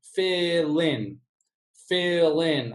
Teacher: We take the consonant sound and move it over in front of in. So this in would sound like lin, lin.